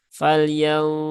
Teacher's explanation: tunaikan ya tunaikan Ee ikhfanya ya ini ikhfa ausat ya falyu Ya ditahan dulu tiga harakat ya sempurnakan ghunahnya baru ke huruf duu ya kemudian Duri rinya tipis di sini